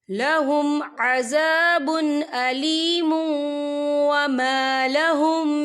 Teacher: اولئک لہم عذاب علیم وما لہم، یہ دیکھیں عذاب علیم، یہاں پہ میم کے پر تنوین ہے، تنوین کے بعد جو ہے واو آ رہا ہے، اور واو جو ہے حروف یرملون میں سے ہے تو یہاں پر ادغام ہوگا، تھوڑا سا غننے کے ساتھ پڑھیں گے۔